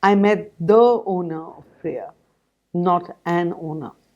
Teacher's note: the contrast of stress on the definite article brings out the sense of uniqueness